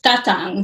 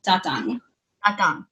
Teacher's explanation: So the emphasis is on the first syllable.